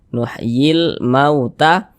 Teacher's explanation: huruf lamnya dibaca izhar, dibaca jelas, terbaca huruf lamnya begitu. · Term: alif lam qamariyah